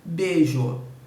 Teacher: Né? Na monotongação, o segmento fraco cai.